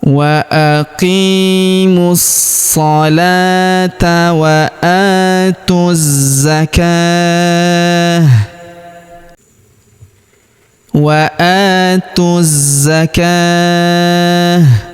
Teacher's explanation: Jadi bukan dibaca ta sukun tapi menjadi ha sukun karena ini adalah ta marbutoh